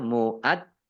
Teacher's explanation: kalau Jim tasdid itu tidak diqalqolahkan ya kalau Jim sukun qqolah atau memantul Tetapi kalau Jim tasdid tidak